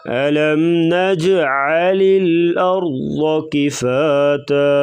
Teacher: ارض را کو پر پڑھیں گے، را ساکن ما قبل زبر، اور ضاد کو بھی پر پڑھا جائے گا، کاف کو باریک کر کے پڑھیں گے